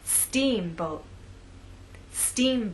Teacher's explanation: making the first part of the word louder longer and at a higher pitch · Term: word stress